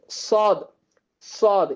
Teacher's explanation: சாத் இது வந்துட்டு விசிலினுடைய தன்மை இருக்கும் சாதுல